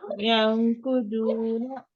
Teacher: making sure noon is not clear sound, but concealed. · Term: ikhfa